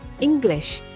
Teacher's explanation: the vowel in the first syllable, ing, is louder, longer, and at a higher pitch than in the second syllable glish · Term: primary word stress